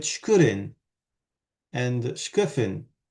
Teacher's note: when the word begins with a cluster, shk, and the clusters there are always sibilant plus something, then instead of stressing the second weak vowel, you stress the first weak vowel